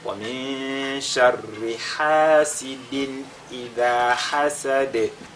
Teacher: À la fin, on fait al-qalqala sur la lettre dal.